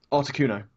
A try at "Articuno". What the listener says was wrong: You like really pronounced the Arctic and Articuno. It sounded weird the first 2 times. It's probably just because you're from the land of tea and crumpets.